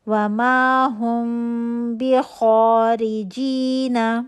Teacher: یہاں پہ میم کے بعد با تھا، تو ہم یہاں پہ اخفاء شفوی کا رول کریں گے. پیپر تھن گیپ، 2 کاؤنٹ کا غنہ، ہونٹوں کو بہت قریب سے بند کریں گے، صرف پیپر تھن گیپ رہے گا. بھی خو موٹا حرف ہے، الف مدہ بن رہا ہے، اس کو موٹا کریں گے، الف مدہ بھی موٹی ہوگی خو کی وجہ سے.